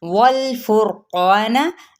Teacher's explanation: वल फुरक़ान, यहाँ पे फा की पेश को रॉ के साथ मिलाएंगे और रॉ पुर पड़ी जाएगी क्योंकि रॉ साकिन माकबल क्या है, पेश यानी ज़म्मा है, ठीक है।